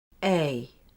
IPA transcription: eɪ